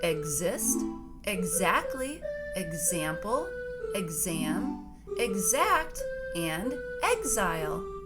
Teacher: push-up [Music] [Music] the rule for x sounding like z is when the letter x is followed by a voiced sound and a stressed syllable it makes the x say the z sound